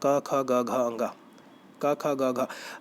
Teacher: आप जब बोलते हो तो का जो है वो कंठ से शुरुआत होती है